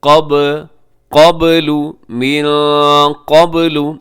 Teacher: جی من قبل، یہاں نون ساکن کے بعد قاف یہاں بھی اخفا کیجیے گا. قبل میں با قلقلہ ہے، قاف موٹا ہے